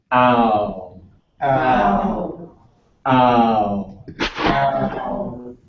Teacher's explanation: The W is rounding, which means your lips are pursing out. You're making a kissy face or a fish face.